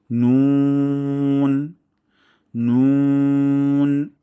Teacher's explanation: আর নুনের মাখরাজ হলো জিহ্বার আগা এবং তার বরাবর উপরে তালুর সঙ্গে লাগিয়ে আমরা পাতলা সাউন্ডে উচ্চারণ করব